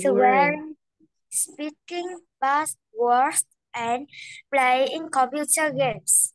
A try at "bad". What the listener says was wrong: Chữ bad này nè. Con đừng có bỏ s vô nha. Bad. Bad. Đừng có bỏ s nha.